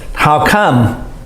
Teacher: How come? Voice goes up a little bit.